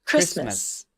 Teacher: There is no T sound in the word Christmas. Although the letter T is in the spelling.